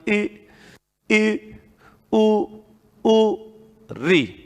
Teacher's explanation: इनके उच्चारण में मुख सबसे कम खुलता है, बिल्कुल बंद सा रहता है